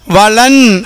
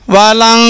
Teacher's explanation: நூன் சத்தம் கொடுக்காமல் குன்னாவுடன் ஓத வேண்டும். குன்னாவுடன் ஓதுவது என்றால் என்ன என்றால், நன்கு அழுத்தி ஓதும்போது மூக்கால் அவர்களுடைய சத்தம் குன்னாவுடைய சப்தமாகும்.